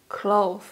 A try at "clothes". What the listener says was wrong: Again, the th s sound. When you watch this video back, you will see that it's really tricky.